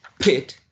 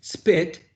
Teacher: For example, if you say pit, the sheet of paper shakes, right? But when you say spit, it doesn't, or very, very low.